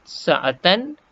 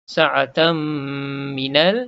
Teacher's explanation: Asalnya sebut sa'atan, jadi sa'atan, tan tu jadi tam, tutup mulut berserta dengung. Sa'atam minal, jumpa alif lam. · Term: idgham ma'al gunnah